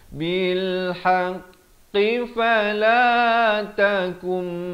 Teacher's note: masuk beserta dengung. Nun mati bertemu mim. Idgham bi gunnah, kadar panjang dua harakat.